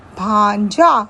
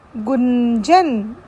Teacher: अनुस्वार के बिंदु का उच्चारण नासिक्य व्यंजन के रूप में सुनाई पड़ता है